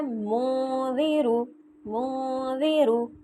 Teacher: آگے ہے منذرو، منذرو، من نہیں کہوں گی، ظاہر نہیں میں نے نون کو پڑھنا، نون کو چھپا کے پڑھنا ہے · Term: اخفا